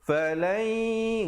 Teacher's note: Falai, di situ hukumnya idgham bi gunnah. Nun mati bertemu ya. Jangan lupa dengungkan 2 harakat. Masuk beserta dengung.